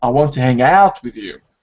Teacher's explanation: the focus of the stress is on the action